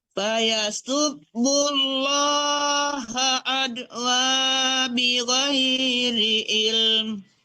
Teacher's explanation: jangan ditipiskan dulu baru ditebalkan ya. Lam Allah itu langsung tebal.